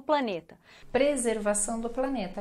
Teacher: R não muito pronunciado, né? Mas baixo, menos forte.